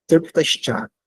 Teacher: A própria boca já está numa posição que o S já seria palatal. Então, por causa disso, ele é substituído o dental pelo palatal.